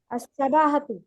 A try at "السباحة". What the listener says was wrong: সিবাহাতু, এটা কাসরা হবে, জের হবে, আস-সিবাহাতু।